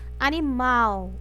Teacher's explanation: o mal é a sílaba mais forte as outras são átonas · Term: sílaba tônica